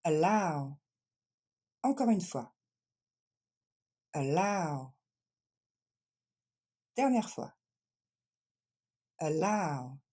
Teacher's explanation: Donc ce premier A, c'est pas un A, c'est juste le son E. Et c'est la deuxième syllabe qui est accentuée.